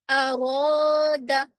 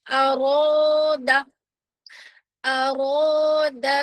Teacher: ارو جو الف ہے ہماری موٹی ہو جائے گی اور دال کو جلدی اور حمزہ کو بھی جلدی